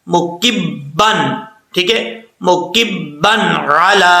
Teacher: کاف کے بعد جو با آ رہا ہے یہ با مشدد ہے، پہلے کاف کو با سے ملائیں گے، پھر با کی جو حرکتیں وہ خود پڑھی جائیں گی.